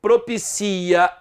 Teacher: A sílaba tônica agora é a penúltima. Propicia, a sílaba tônica é o si.